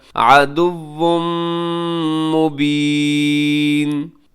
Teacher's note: عدوٌ کے آگے تنوین ہے اور تنوین کے بعد میم ہے یرملون کا، یہاں پہ ادغام کیجیے گا